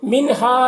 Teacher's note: نون ساکن کے بعد ہا ہے، حروف حلقی میں سے، تو نون میں اظہار ہوگا، نون کو جلد پڑھنا ہے۔